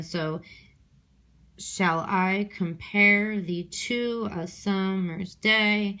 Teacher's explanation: I feel like I'm saying I is a little bit more prominent than shall. Shall is unstressed